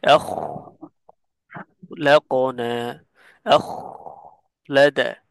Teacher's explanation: খতে বাতাস বের হবে এবং আওয়াজ চলমান থাকবে।